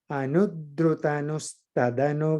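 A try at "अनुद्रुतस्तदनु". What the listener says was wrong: No, again, you add an extra na there. Anudrutas.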